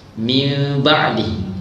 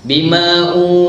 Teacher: Min ba'dihi, contoh min ba'dihi, rapat bibir sedikit. Kalau ikhfa, kena buka mulut terus.